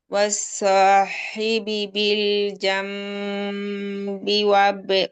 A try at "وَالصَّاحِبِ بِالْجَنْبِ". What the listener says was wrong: আসলে জাম, এত প্রেশার না, মিমে আমরা টাচ করব শুধু, যা, জাম্বি, বেশি প্রেশার দেবো, আর জাম, এটা না, জাম্বি,